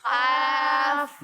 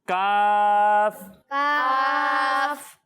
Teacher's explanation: تو قاف کو ہم پر پڑھیں گے، ٹھیک ہے، موٹا کر کے پڑھیں گے، اور کاف کو باریک پڑھیں گے